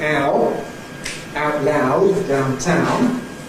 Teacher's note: The owl diphthong in estuary English starts with A